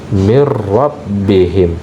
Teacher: pada huruf ra itu ada getaran yang berulang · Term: takrir